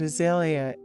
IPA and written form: əˈzeɪliə (Azalea)